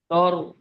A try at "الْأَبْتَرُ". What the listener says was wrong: হ্যাঁ, তর বলছেন, তর হবে না, তার।